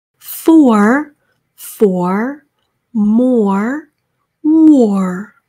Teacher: 이중 모음 하듯이 오우 한 다음 or를 따로 마무리를 해주셔야 돼요.